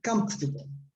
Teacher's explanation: the stress is on the first syllable on the left, right? Comfortable. So the syllable in the middle almost disappears.